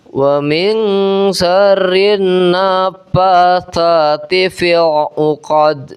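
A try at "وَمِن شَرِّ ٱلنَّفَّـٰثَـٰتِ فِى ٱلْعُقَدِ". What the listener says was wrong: Kemudian naf ya. Naknya ketemu fa bertasydid jadi naf. Fa bukan nafas tapi naf.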